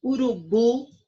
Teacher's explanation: Urubu, o bu é a sílaba mais forte.